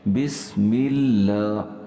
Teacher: لفظ اللہ جو ہے وہ پچھلے لفظ جو اس سے پہلے والا ہے میم، اس کے ساتھ مل رہا ہے اور اس کے نیچے زیر ہے، اس لیے لفظ اللہ باریک پڑا جا رہا ہے